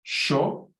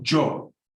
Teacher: When you say I, you can either go yo, or with an sh, sho, or jo.